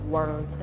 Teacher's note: Because my tongue naturally just goes up when there's an R, so it's just like world.